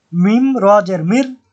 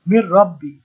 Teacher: মিম নুন জের মিম পড়ার কথা ছিল কিন্তু তাসিদ্দি থাকার কারণে নুন টাকে না উচ্চারণ করে র টাকে পড়বো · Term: ঈদগাম